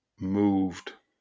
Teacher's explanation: you're combining the V and T sound. That's quite a difficult pronunciation. It's not moved, it's moved, and you have to pronounce that V with the T sound.